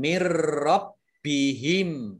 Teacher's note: Roknya dibaca double, ada tasdidnya.